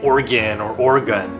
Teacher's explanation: people in Oregon don't pronounce the middle syllable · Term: without the middle syllable